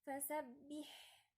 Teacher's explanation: جريان نفس. انا مش محتاجة صوت، انا عايزة نفس بس، لان الحاء من الحروف الضعيفة وهي ساكنة فضعفت اكتر، فانا اديها الصفة عشان اقويها شوية عشان تظهر. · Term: همس